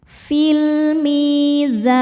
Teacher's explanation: Alif lamnya dinamakan dengan alif lam qomariyah sebab alif lam menghadapi huruf qomariyah yaitu mim, maka lam sukun dibaca idhar atau jelas. Fil mi mad tabi'i dhahiri sebab ada ya sukun sebelumnya kasrah. Cara bacanya panjang 2 harokat.